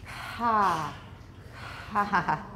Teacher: probably has a really long period of aspiration